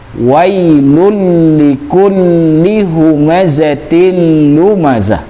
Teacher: Jadi ditahan. Di wailul itu setelah lul itu di lam selanjutnya ada tasydid, ditahan. Kemudian likulli di linya juga ada tasydid di atasnya, juga ditahan tuh.